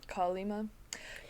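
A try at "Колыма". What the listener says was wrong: I mean, it is, but the E is not stressed, so it's...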